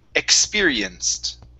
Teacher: The ed ending here because the c produces an s sound. The ed is pronounced like a t.